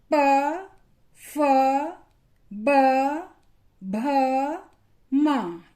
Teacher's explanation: इन वर्णों का जब हमने उच्चारण किया तो हमारे दोनों ओंठ आपस में मिलते हैं। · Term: प वर्ग